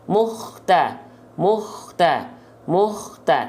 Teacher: Maka ya, ketika melafalkan huruf kho sukun di sini, pastikan keluar dari ujung tenggorokan dan mengalirkan salah satu sifat nafas, ya, yang mengalir hams dengan karakteristik dengkuran atau ngorok